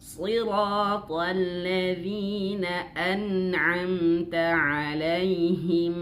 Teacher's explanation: siratal, to-nya tebal, alnya tipis.